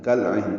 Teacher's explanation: کل عین میں لام ساکن ہے، اس پہ اظہار ہے، اصل میں کا اور العین ہے، کل عین پڑھیں گے.